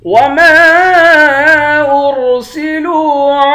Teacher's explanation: لام کو واو کے ساتھ ملا کر واو کو ایک الف کی مقدار کھینچیں گے